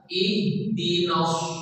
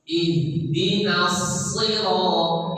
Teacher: Setiap huruf yang berbaris toma berseman bibir harus ikut. Ihdinas ujung lidah dengan dekat dengan gusi bawah. Itu makhrajnya.